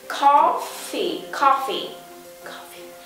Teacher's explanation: từ cà phê ta có từ nhấn âm đầu tiên